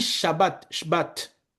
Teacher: Quand on dit Shabbat, Shabbat, le premier A de Shabbat, ça va être un patah. Et l'autre bat, on ouvre plus la bouche.